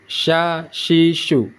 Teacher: cara membacanya tengah-tengah lidah hampir bersentuhan dengan langit langit-langit